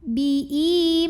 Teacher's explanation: Mad tabi'inya mad tabi'i zahiri. Karena ada alif yang didahului baris fathah, maka kita panjangkan mimnya 2 harokat